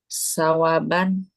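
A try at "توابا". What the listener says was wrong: Ta? Ta apa ta? Ada sawaban atau tawaba?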